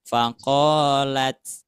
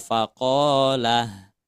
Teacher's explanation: Kalau ini tak maftuhah, arti tak maftuhah itu terbuka taknya itu. Terus ketika diwakofkan tak maftuhah tetap bunyinya tak ya.